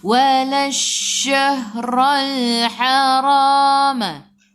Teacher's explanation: Terus tekan dalam shin, alif lam syamsiyah, lam tak ada sukun selepasnya ada sabdu. Shin sifat hurufnya tafashi, kena hambur. Walash tu yang hambur.